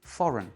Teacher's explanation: C'est la première syllabe qui est accentuée et la deuxième est réduite. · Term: réduction vocalique